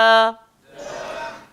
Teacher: Huruf dal macam huruf ta. Beza dia, ta itu nipis, dal ini sederhana. Jadi kita sebut da.